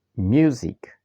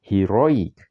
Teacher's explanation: Rule number four, word ending in IC. These words have the main stress on the syllable before the IC ending.